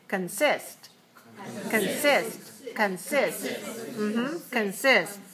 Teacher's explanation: consist has two syllables and it's stressed on the second one